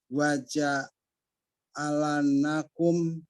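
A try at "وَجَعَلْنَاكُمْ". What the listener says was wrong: Lamnya disukun Pak, disukun pakai pulpen Pak. Wajah alnakum, bukan wajah alana. Wajah alnakum, lamnya disukun. Wajah alnakum.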